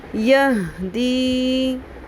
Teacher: ہ ساکن آ گیا ہے، سانس کی آواز نہ آئے، سینے کے جانب والے حلق کے حصے سے آواز آئے